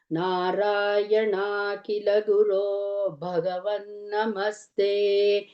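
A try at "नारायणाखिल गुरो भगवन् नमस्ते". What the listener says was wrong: here and there ಮಹಾಪ್ರಾಣಸ್ can be heard a little more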